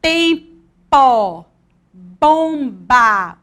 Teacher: ó tampa né bonde é tempo bomba você observa que os seus lábios se tocam na hora que você vai pronunciar o som dessas letras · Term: som bilabial